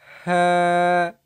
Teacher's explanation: কণ্ঠনালীর মধ্যখান হইতে উচ্চারিত হবে